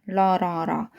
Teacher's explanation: 혀끝이 잇몸 뒤에 가서 붙는데 약간 흔들리면서 떨림이 나면서 양옆으로 공기의 흐름이 계속 바깥으로 새어나가는 소리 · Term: 리을